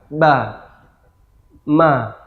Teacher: Huruf berikutnya ya, yaitu huruf ba dan ma atau ba dan mim. Huruf ba dan mim mengucapkannya sama ya, yaitu dengan melancipkan kedua bibir ya. Ba, ma, ba, mim ya.